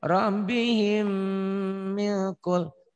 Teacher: Gunah itu nyamber dan double. Ditahan, ada panjangnya dan ada dengung ke hidungnya gitu. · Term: idgham mimi